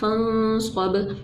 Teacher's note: बा जो है वो साकिन है इसलिए यहाँ पर कलकला किया